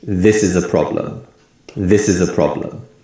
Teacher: we put more emphasis on the word this and the first syllable of problem and other words in syllables become weak sounds so we say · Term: stress